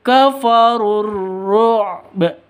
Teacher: Kafaru awalnya panjang, kafaru berhubung bertemu dengan hamzah ya, runya ini langsung runya tidak dianggap wau alif dan hamzahnya ini tidak dianggap, dibuang saja, langsung masuk ke ro